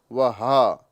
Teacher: हक के नीचे वाले हिस्से से अदा किया जाता है।